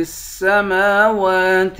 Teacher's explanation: میم کے بعد الف ہے، الف حروف مدہ ہے، ایک الف کے برابر کھینچ کر پڑھیں گے